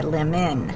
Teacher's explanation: This is still a closed syllable though because it's closed in by the consonant. So lemon, it's the schwa, is the O, it's in the unaccented syllable.